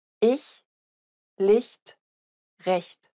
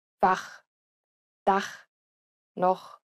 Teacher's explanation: The former is pronounced closer to the front of the mouth, while the latter is pronounced at the back of the mouth.